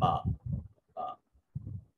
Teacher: یوں کہہ لیں کہ جہاں منہ کی تری ہوتی ہے، منہ کی تری ہونٹوں کے اندرونی حصے تک جہاں سے ادا ہوتی ہے، یہ دونوں ہونٹ اوپر والا بھی اور نیچے والا جب یہ ملیں تو با ادا ہوتی ہے